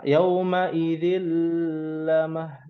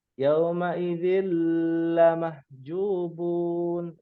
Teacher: bacaan yang kurang tepat adalah ketika tanwin ketemu dengan lam bertasdid lalu ditahan lama karena dia bukan gunnah musyaddadah